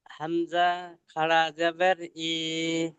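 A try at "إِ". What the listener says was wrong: এই খাড়া জাবার ওপর এখনই হয়ে গিয়েছে খাড়া জাবার, ওই আলিম মাত্রার মধ্যে, এবার নিচে হবে, নিচে খাড়া জের লাগিয়ে পড়েন, নিচে জের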